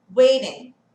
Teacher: Esse T vai virar um sonzinho de D bem leve